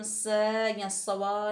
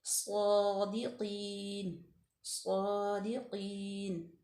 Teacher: वहाँ आगे जाके स्वाद पे फतह इशबाई है और स्वाद जो है वो हुरूफ मुस्तालिया में से है, पुर पढ़ा जाएगा। इसको हम स या सवा नहीं करेंगे, सादिकीन, सादिकीन, ठीक है।